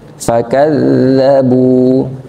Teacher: Kalau dza itu keluar udara, cuman udaranya keluarnya di bawah 30%, di bawah 40% lah. Fakadzabu, digigit ya.